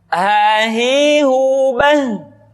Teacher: Dikeluarkan dari tenggorokan yang terjauh. Sama seperti kita mengucapkan huruf a. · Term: huruf ha